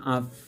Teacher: নিচের ঠোঁটের ভিতরের অংশ বা ভিজাংশ এবং সামনের উপরের দুই দাঁতের মাথা, এ মাখরাজ থেকে উচ্চারিত হয় ফা